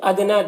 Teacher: ادنا دال میں قلقلہ ہوگا، اور نا میں جو مد ہے اس مد کو مد منفصل کہتے ہیں، اسے 3-4 الف کے برابر کھینچ کر پڑھتے ہیں، اور ایک الف کے برابر بھی کھینچ کر پڑھ سکتے ہیں۔